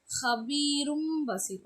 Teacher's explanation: நீங்கள் வந்து இம்மு சொல்லும்போது உங்களோட மூக்கின் நுனியிலிருந்து சத்தம் வெளிப்படணும். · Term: இக்லாப்